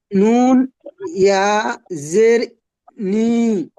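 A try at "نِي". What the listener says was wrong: আরো টানেন, আরেকটু টানেন, নি পড়েন।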